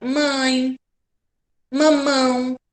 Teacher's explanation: esse som sai anasalado sai parte pela boca e pelo nariz